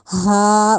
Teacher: یہ سینے والی سائڈ سے ہمارا ادا ہوگا، حلق سے ادا نہیں کیا جائے گا. رافع ہا اس طرح کچھ نہیں کہا جائے گا.